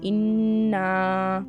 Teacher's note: نون کے اوپر تشدید ہے اور آگے الف، غنہ کریں گے